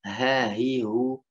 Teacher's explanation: Ha di bawah tenggorokan. Tenggorokan paling bawah maksudnya, paling jauh.